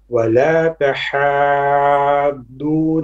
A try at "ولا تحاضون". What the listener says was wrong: A bit longer on these 6 beats. The long beat is on the mad lazim. Okay, this is 6 beat. This is obligatory. It's like dalin as well when you have a mad before a shadda. You have to learn to make it a bit longer.